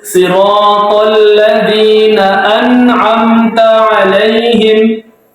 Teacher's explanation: Jelas sukunnya nun. Tidak boleh disamarkan, tidak boleh dipantulkan. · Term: Idhar